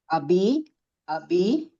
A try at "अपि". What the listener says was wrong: अपि पकार प